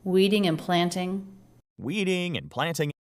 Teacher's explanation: And since these are just two syllable words, stress is on the first syllable.